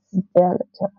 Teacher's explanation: you have the s sound, I think, which is actually an unvoiced consonant, and then you have a d, which is a voiced consonant. I think what's supposed to happen here when you try to pronounce this is you don't try to pronounce s and d together.